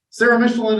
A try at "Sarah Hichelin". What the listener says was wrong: Sarah Michelin, actually it's Sarah Hichelin. My name is like Michelin tires, only with an H.